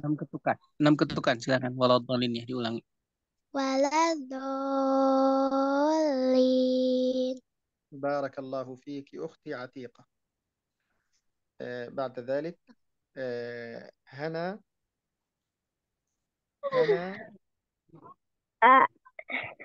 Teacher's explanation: لمد في ولا الضالين ست حركات